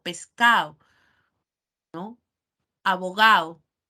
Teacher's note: la pérdida de la D cuando está entre vocales